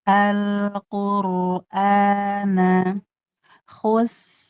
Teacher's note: khusus sinnya tipis tipis baru rnya tebal.